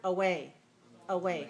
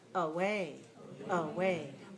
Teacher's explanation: right weak strong short long right away so this one has one long clear vowel a in the word way and one short weak sound